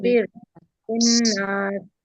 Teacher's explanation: नून पे तशदीद है तो इसको 3 काउंट का गुना करेंगे